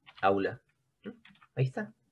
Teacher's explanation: Y si digo aula, la tonicidad está en la vocal abierta. Y la que no está sombreada, la del costadito, la U, que es vocal cerrada, como ves, es átona, entonces ahí se produce un diptongo. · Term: abierta tónica